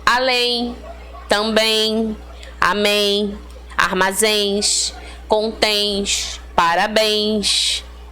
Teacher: reparou que o final delas é esse ditongo nasal em então tem acento É uma oxítona com ditongo nasal tá